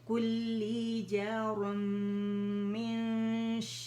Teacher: لیکن کیونکہ میم ہے نا تو اس کا ادغام ہو جائے گا. ادغام تام بالغنہ.